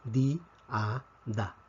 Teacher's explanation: Puesto que tenemos un hiato, esta palabra se pronuncia en tres sílabas.